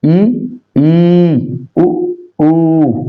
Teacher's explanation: समवृत स्वर में मुख द्वार पूरा बंद रहता है।